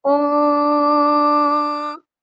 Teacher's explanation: اس والی نون پر غنہ نہیں ہوگا بلکہ اخفا ہوگا کیونکہ یہاں پر نون جو ہے وہ مشدد نہیں ہے، نون ساکن ہے اور اس کے بعد حروف اخفا میں سے شین ہے۔